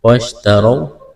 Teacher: وَاشْتَرَوْا را کے اوپر زبر ہے، را کو موٹا پڑھنا ہے، واو ساکن سے پہلے زبر ہے، واو لین ہے، اس کو کھینچنا نہیں ہے۔